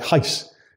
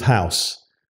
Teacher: the Queen used to say things like heis instead of house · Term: hyperlect